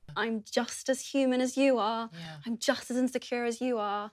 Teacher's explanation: If you listen carefully you'll notice a /w/ sound between the words 'you' and 'are'.